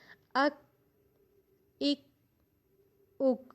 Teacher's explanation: تھوڑا سا سانس کی آواز بھی آئے گی لیکن وہ بہت زیادہ نہیں آئے گی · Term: صفت شدت